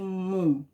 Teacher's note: mum é a sílaba tônica dessa palavra. Então, ela está na penúltima sílaba.